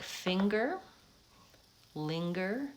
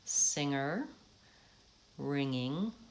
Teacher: release your ng into the vowel without letting that G or K sound sneak in there so in order to do that I recommend practicing just the